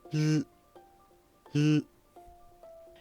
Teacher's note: For l, your tongue touches the alveolar ridge, and air flows from the sides. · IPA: /l/